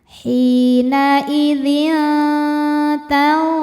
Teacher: Berikutnya ada ikhfa hakiki aqrab, karena tanwin kasrah menghadapi huruf ta. Cara bacanya tanwin disamarkan ke ta disertai dengung.